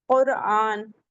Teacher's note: را ساکن ہے، اس سے پہلے پیش آ رہا ہے، ضمہ آ رہا ہے، تو یہاں بھی را کو موٹا پڑھیں گے